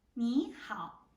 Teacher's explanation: When third tone meets third tone, we're gonna change the first third tone to be a second tone. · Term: Third tone plus third tone